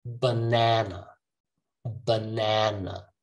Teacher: start with the schwa end with the schwa